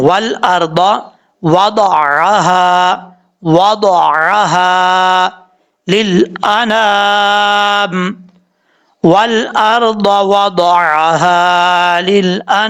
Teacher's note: ضاد کے بعد عین ہے, اس کو بھی آپ نے کلیئر کرنا ہے. حمزہ نہیں پڑھنا, واو دا ال نہیں پڑھنا.